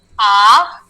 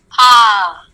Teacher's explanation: अ का उच्चार करने में एकदम कम समय, आ का उच्चार करने में थोड़ा सा ज्यादा समय